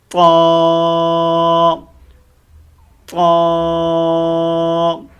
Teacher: زبان کا جو بیچ ہے، جو درمیان ہے، وہ اوپر تالو کے ساتھ جا کر کے لگتا ہے، تو لفظ طا ادا ہوتا ہے، ٹھیک ہے۔